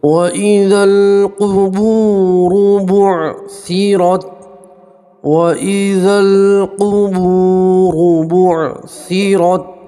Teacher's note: کہ واو کے اوپر جزم ہو اور اس سے پہلے والے حرف کے اوپر پیش ہو تو اسے آپ واو مدہ کہیں گے، ٹھیک ہے۔ تو واو مدہ میں بھی آپ کو ایک الف کے برابر کھینچ کر پڑھنا ہے